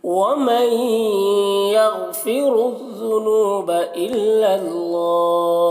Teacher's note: नून साकिन के बाद या है हुरूफ़ यूमिन में से, तो इसे इदगाम नाकिस कहते हैं, गुन्ना के साथ पढ़ा जाता है। या गैन को पुर पढ़ना है, कलकला ना होने पर इसका ख्याल रखना है, रॉ को पुर पढ़ना है, और ज़ुनूबा नू में वाव मद्दा है, इल्लल्लाह अल्लाह को पुर पढ़ना है।